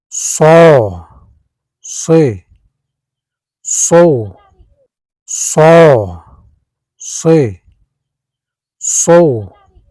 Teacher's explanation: This Arabic letter is articulated by placing the tip or blade of the tongue close to the upper gum ridge, alveolar area, creating a narrow passage for air to flow with friction. It is a voiceless emphatic fricative, meaning the vocal cords do not vibrate during pronunciation, while the back of the tongue rises slightly toward the soft palate to produce a heavy, deep quality known as tafkhim. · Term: alveolar fricative